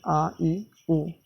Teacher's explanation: त्यांचा उच्चार ऱ्हस्व स्वरापेक्षा लांबट होतो आहे. त्यामुळे यांना दीर्घ स्वर असे म्हणतात.